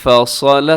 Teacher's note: صرف حرف صاد اسے موٹا رکھنا ہے